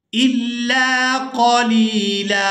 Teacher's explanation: وقف کی صورت میں ہم نے لام کو ایک الف مقدار کھینچ کر ادا کرنا ہے اور اس پر ایک زبر ادا کرنی ہے، اور یہاں سے ہم بغیر کوئی اور حرف ملائے تلاوت کا آغاز کر سکتے ہیں۔